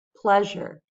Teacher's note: I want to show that it's the first syllable that gets the stress. And I'm going to write it this way with a large circle and a small circle.